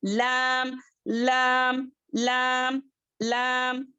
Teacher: लाम जो है सनाया से लेके दवाहिक तक के दांतों को हमारी जुबान का जो साइड्स है वो टच करने से लाम अदा होता है